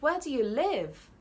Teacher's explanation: so you've emphasized the word live